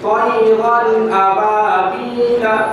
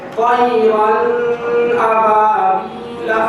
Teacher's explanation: تو اس کو اظہار جو کہا جاتا ہے وہ اس لیے کہا جاتا ہے کہ اس قاعدے میں یعنی تنوین اور نون ساکن کے بعد حروف حلقی حمزہ ہا، عین ہا، غین ہا، ان 6 حرفوں میں سے کوئی بھی ایک حرف آ جائے تو تو تنوین یا نون ساکن کی آواز کو ہم ظاہر کر کے پڑھیں گے، چھپائیں گے نہیں